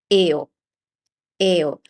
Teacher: in Italian, you just pronounce every single vowel always the same way. So this pair of vowels is pronounced as e, o, and then you just put them together, eo, eo. So keep this in mind for any name or Italian word that has consecutive vowels, so more than one vowel, more than two vowels next to each other.